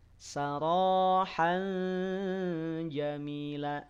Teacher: Ro panjang 2 harokat keluar dari ujung lidah dan tebalkan suaranya. Saro tafkhim, pangkal lidahnya naik.